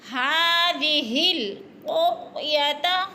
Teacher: قو کو بھی نہیں ہلانا، قوف موٹے حروف میں سے ہے، پر کر کے پڑھنا ہے